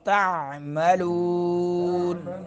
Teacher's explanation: درمیان حلق سے عین ادا کریں گے